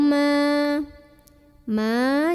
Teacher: di sini ada Mad Thobi'i karena ada Alif sebelumnya vattha maka huruf mim yang barisnya Fatah ini kalau ketemu Alip panjangin dua harokat